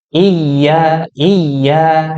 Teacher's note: Nah, di ya tasydid ini ada namanya hukum nabroh. Hukum nabroh itu artinya menaikkan sedikit nadanya